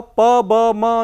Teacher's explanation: lower lip touches the upper lip, it is bilabial